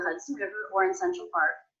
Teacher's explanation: I noticed I did not reduce the word or